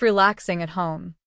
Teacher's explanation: Relaxing becomes relaxing with no G sound at the end.